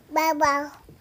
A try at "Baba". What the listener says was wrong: Not bubble, Baba.